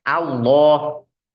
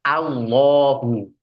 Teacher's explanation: a di situ harus tipis dengan tersenyum